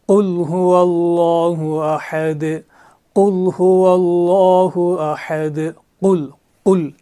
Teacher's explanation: زبان کا روٹ اوپر کے حصے سے ملانے سے قاف ادا ہوتا ہے۔